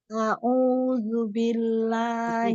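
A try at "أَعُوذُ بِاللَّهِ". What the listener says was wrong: Ini harusnya A dengan O kan beda jauh ya. A'udzu. Coba yuk.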